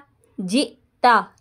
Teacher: حمزہ ساکنہ کو جھٹکا دیں گے